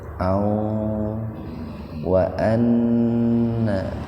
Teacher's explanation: fathatain ketemu wawu, jadi membacanya dimasukkan ke wawu dengan mendengung. Alifnya diabaikan saja. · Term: idgham biguna